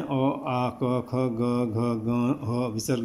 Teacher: ये कंठ से निकलते हैं। इनके उत्पत्ति स्थान कंठ है, गले से निकलते हैं। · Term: कंठ्य